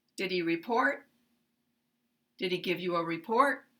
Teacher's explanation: at the end of the sentence, they are going to have the same rising intonation, even though they have different syllable stress